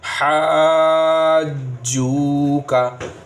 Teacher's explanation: हा अलिफ पर क्या है, मद है, तो पहले हा को खींचना है